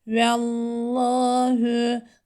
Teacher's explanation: Lafzatullah'taki lam kalın okunur. Çünkü kendinden önceki harfin harekesi üstün olduğu için. Lamda şedde var idgam nisleğindir.